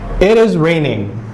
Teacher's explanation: There's a fall when I'm saying raining.